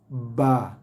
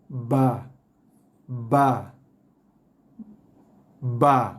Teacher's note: Ba ni bunyi dia solid sikit. Tutup. Bagi tekanan sikit pada bibir.